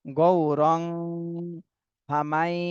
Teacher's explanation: তানভিনের পরে ইকফার হরফ আসছে, এই জন্য এই তানভিন আমাদের ইকফা গুণা করতে হবে। গৌরং ফামাই, এখানে নুন সাকিনের পরে ইদগামে বা গুন্নার হরফ ইয়া, এজন্য ইয়াকে এই মিমের সাথে মিলাতে হবে, গুন্না সহ মিলাতে হবে।